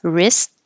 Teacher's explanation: forget about the W and you don't hear the T